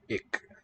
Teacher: Dutch just has a velar stop.